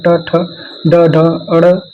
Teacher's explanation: मूर्धन्य में मूर्धा से बोलते हैं, जिसमें ट वर्ग आता है